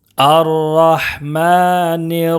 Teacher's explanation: میم کے اوپر کھڑا زبر ہے، اس کو ایک الف کے برابر کھینچ کر پڑھیں گے